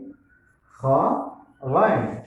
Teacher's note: কণ্ঠনালীর শেষ অংশ থেকে উচ্চারিত হয় 2টি হরফ